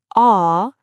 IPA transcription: ɒ